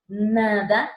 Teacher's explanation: la N está adelante y por ende es alveolar.